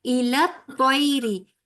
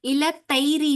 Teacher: توئی میں پیچھے سے زبان اٹھتی ہے، اور توئی میں واپ کا جو ہے وہ لفظ موٹا ادا کیا جائے گا، ٹھیک ہے.